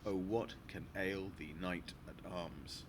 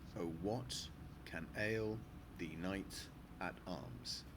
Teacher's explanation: 8 syllables per line. Syllable 2, 4, 6, and 8 are stressed. And then, the first 3 lines are in iambic tetrameter, so you get the rhythm.